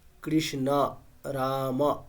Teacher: সংস্কৃতের ক্ষেত্রে অকারটাকে অকারই বলতে হবে। ওকার বললে সেটা ভুল।